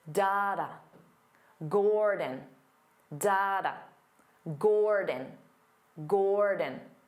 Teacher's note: because the first syllable is stressed Gore so the second syllable becomes that unstressed vowel sound